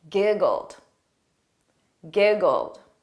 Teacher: So notice that ED is pronounced as a very soft D.